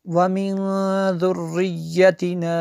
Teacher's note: نون ساکن کے بعد ذال حروف اخفا میں سے یہاں پہ اخفا ہوگا